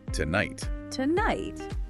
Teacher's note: Where does that fall? It's unstressed on the first syllable, two, and stressed on the second, night. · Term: unstressed stress pattern